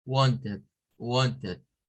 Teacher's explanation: en vez de sonar a id, con el sonido id, se suena un schwa